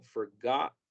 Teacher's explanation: en algunos acentos de los Estados Unidos, especialmente en el sur, vamos a escuchar que la T es muda en esta palabra. Yo personalmente la pronuncio esta palabra sin la T como forgot.